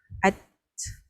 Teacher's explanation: hamas maknanya nafas kita terlepas tetapi suara tertahan